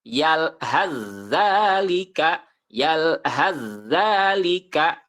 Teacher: sa dan dalal sama jadi ujung lidah ditempelkan ke ujung gigi seri atas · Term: idgham mutajanisen